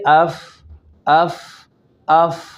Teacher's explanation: اب پہلے مخرج ہے اس کا کہ ثنایا علیہ یعنی اوپر کے دانتوں کا کنارہ اور نیچے والے ہونٹ کا شکم یعنی پیٹ